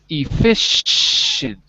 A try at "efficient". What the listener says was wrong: Okay, good, but I'm hearing efficient. There's no k. There's no k sound. Efficient. Efficient. No, you're saying effic. You're saying effic. So you're saying effic, but that's wrong. But remember, just because you see a C doesn't mean there's a k sound. So there's no effic. It's effish. Just like the fish you eat.